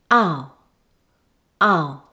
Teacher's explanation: Your jaw should be slightly open and your lips in a neutral position, and say ah. Now glide to a weak uh sound by moving the tongue upwards and backwards, and the lips move to become more rounded. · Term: ow sound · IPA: /aʊ/, ʌ → ʊ